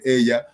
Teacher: la que lleva el acento de la palabra en este caso en el pronombre ella la sílaba tónica es la primera